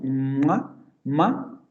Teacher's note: no solamente se dirige hacia la parte de la boca sino que además se abre el conducto nasal y el aire sale también por la por la nariz · al producir este sonido a los dos labios se pegan para generar esa obstrucción del sonido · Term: consonantes nasales, bilabiales